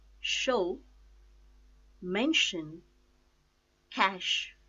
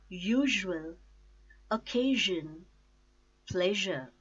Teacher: Voiceless consonant sh sound and voiced consonant sh sound.